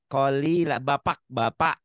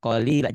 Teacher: Seakan-akan ada kak, tapi nggak ada kaknya.